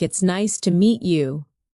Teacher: The voice goes up slightly at nice and falls gently at you. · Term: rise and fall